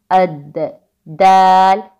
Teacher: देखिए जहाँ पे आवाज़ रुक रही है अद, लेकिन चूंकि यहाँ पर दाल साकिन पर कलकला आता है इसलिए इसकी आवाज़ बाउंस होती है